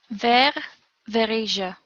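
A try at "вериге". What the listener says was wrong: You do not, I'm not sure if I'm hearing it right here, but you do not need a linking vowel here.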